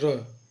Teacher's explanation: जिन व्यंजन वर्णों का उच्चारण करते समय जीहवा में दो-तीन बार कंपन होता है उन्हें प्रकंपित व्यंजन कहते हैं। इनकी संख्या एक होती है र ये लुंठित व्यंजन भी कहलाते हैं।